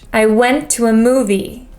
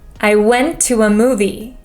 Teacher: went and movie Stand Out the most and the other words I to and a are not so